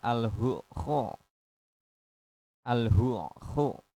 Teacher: Di situ kan ada ha, ada ain, ada kha, terus ain lagi. Dan semuanya ini masuk dalam makhraj halak atau tenggorokan.